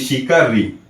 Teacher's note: ऋषि का ऋ का उच्चारण करते समय हमारे अंदर से आती हुई वायु मूर्धा के पास से होके गुजरती है। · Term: मूर्धन्य